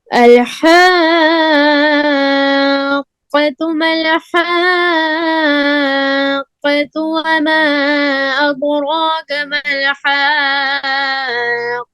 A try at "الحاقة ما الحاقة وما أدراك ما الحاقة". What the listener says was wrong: قاف کو دبا کر پھر سنیے. الحاقة ما الحاقة وما أدراك ما الحاقة. جو درمیان والا آپ نے پڑھا نا وہ قاف آپ کا صحیح نہیں پڑھا گیا.